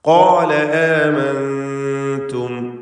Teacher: ഖാഫും അതിൻ്റെ ദീർഘാക്ഷരമായ അലിഫും ഇസ്തിഅലാഇൻ്റെ ഹർഫായ ഖാഫിനെ തഫ്ഖീം ചെയ്യണം.